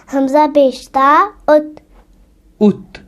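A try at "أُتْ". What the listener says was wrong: ہاں پیش ہے نا، عربک میں اوت نہیں کرنا. ات. ات ات ات.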